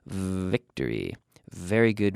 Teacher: like an F, but a vocalized or voiced F sound. So we have to activate the vocal cords.